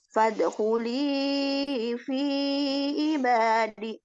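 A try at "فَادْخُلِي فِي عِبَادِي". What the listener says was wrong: Ibadi panjang.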